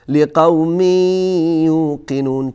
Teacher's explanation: تنوین که همانا نون هست فرو میرود در یا، در حرف بعدی که حروف ادغام 6 حرف هست.